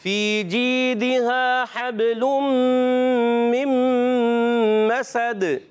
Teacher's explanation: تنوین ہے، مگر جب وقف کریں گے آگے وقف تو اس کو کلکلا کریں گے، ساکن کر دیں گے اور کلکلا ہوگا